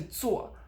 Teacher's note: it actually starts at a mid level and drops so it doesn't start as high it does drop you want to make sure it does drop